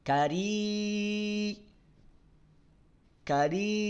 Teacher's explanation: tutup buka hidung kita dia akan tetap berbunyi · panjangkan madnya jangan sambil dengung jangan sambil sengau jangan sambil apaagi samar ya kari kari tutup buka hidung kita